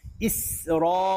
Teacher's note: Ra ni kena baca dengan tafkhim. Ra baris fathah. Tebal.